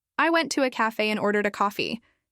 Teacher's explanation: Emphasizing I shows that you, not someone else, went.